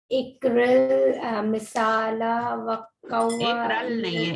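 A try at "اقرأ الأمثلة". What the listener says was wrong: ایک رل نہیں ہے, ایک رل نہیں ہے, اقرا ال, اقرا ال,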